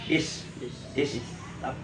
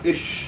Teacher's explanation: Itu sin kecil, sifat hurufnya hamas. Is. Jadi ada desis.